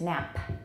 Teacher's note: we used a small raised h is that right because there's some aspiration after it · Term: released voiceless stop